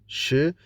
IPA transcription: ʃ